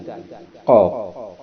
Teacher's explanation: Isti'la artinya atas dan berhubungan dengan pangkal lidah. Dalam arti huruf isti'la, pangkal lidah diangkat ke atas.